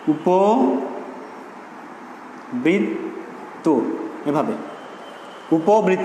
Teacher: পয়ের সঙ্গে যে অ রয়েছে সেই অয়ের উচ্চারণ হবে কিসের মতো, ও এর মতো হয়ে যাবে।